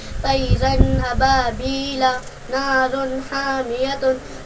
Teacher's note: نون کو ظاہر کر کے بلا گناہ کے جلد پڑھیں گے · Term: اظہار